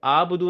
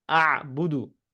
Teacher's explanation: تو یہ آبدو نہیں، اعبدو، ٹھیک ہے. تو اس میں ہلکا سا گلے کا ایلیمنٹ آئے گا